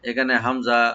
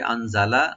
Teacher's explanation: নুন সাকিন এখানে আমরা ইখফা করবো এখানে, আর জাটাকে রাইট দিবেন